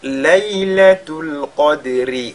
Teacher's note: la lettre ra qui porte la kasra ici, très souvent, les gens omettent de la lire. On ne l'entend pas quand les gens lisent.